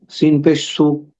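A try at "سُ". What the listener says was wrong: মাশাআল্লাহ, সুন্দর হয়েছে।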